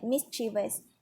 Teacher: the word mischievous has an emphasis on the first syllable, miss. If you are unsure of how to pronounce certain words, look them up and listen to the audio examples of their pronunciation.